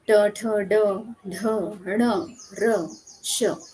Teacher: कि मूर्धा उसे कहा जाता है कि हमारे दाँतों के आसपास एक थोड़ा-सा खुरदरा हिस्सा होता है। उस हिस्से को जीभ टकराती है और फिर इन वर्णों का उच्चारण होता है। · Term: मूर्धन्य